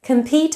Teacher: Compete has a schwa in the first syllable, com, whereas in competition, com now has a full vowel